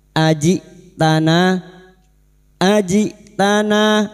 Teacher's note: Qalu ajitana, ajitana huruf hamzah sukun, jangan samakan dengan ain. Hamzah memiliki sifat jahar dan syiddah, tertahannya nafas dan suara, maka ketika sukun bunyinya ajitana, ajitana.